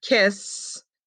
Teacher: in the word kiss it doesn't make any vibration on our fingers